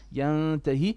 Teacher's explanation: it's an إخفاء but it's flat. It's not heavy.